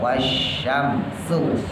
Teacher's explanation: Yang pertama shin tebal, wasyamsu. Nah, yang keduanya sin tipis